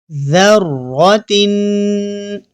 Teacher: ذال کو پڑھنے کا طریقہ یہ ہے کہ ہماری زبان کی نوک سامنے والے دانتوں سے ہلکی سی باہر رہے گی تو ذال ادا ہوگا